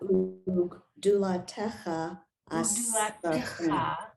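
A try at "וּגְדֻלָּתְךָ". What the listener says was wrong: Ugdulatecha. You added a vowel that's not there. Ugdulatecha.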